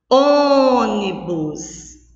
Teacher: On, eu pronuncio com mais força, com mais intensidade. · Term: sílaba tônica